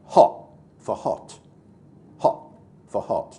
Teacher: glottal stops like hot for hot, hot for hot, dropping his T at the end of the word